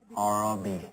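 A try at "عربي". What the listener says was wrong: Arabi. Pronounce the ayn, Baba.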